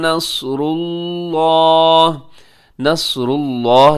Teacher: لفظ اللہ سے پہلے را کے اوپر پیش ہے تو آپ لفظ اللہ کو موٹا پڑیے گا